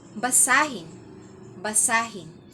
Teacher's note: Nasa ikalawang pantig na or syllable yung diin.